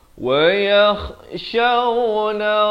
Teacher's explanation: Kha makhrajnya di hujung kerongkong.